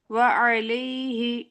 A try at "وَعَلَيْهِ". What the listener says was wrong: جی لئی کر کے، ٹھیک ہے، لا کا وہ سنائی دینا چاہیے، لی کے بجائے لئی، ٹھیک ہے.